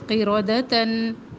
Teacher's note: قاف بھی موٹا رو بھی موٹی